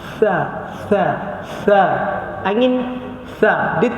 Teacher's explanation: Dia tak kuat seperti sin lah. Dia ada keluar angin. Sa. Tetapi dia tidak kuat sangat macam sin. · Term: huruf sa